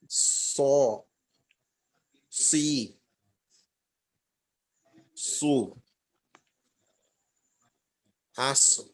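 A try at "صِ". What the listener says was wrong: এবং পেশের সময় মোটা মোটা কিছুটা হইছে কিন্তু জেরের সময় আমরা জানি যে জের থাকলে মোটার পরিমাণ একেবারেই কম তো এই একেবারে কম হবে ঠিক আছে কিন্তু মোটার পরিমাণটা যেন একটু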